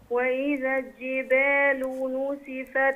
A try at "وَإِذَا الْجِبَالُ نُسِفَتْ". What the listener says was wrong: اللام في كلمة الجبال تبان وتظهر، وإذا الجبال.